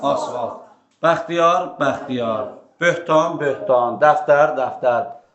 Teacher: söz ortasına yanaşı gələn müxtəlif cinsi kar samitlərinin ikincisi əsasən cingil tələffüz olunur